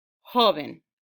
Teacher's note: when i say the word the stress would naturally go on the first syllable hoven but if i'm going to make that word plural then